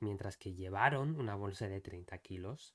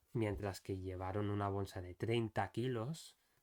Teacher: instead of emphasizing llevaron, it's probably better to emphasize kilos, right? So, because we want to stress not the fact that they carried a bag, but the fact that they carried a 30-kilogram bag.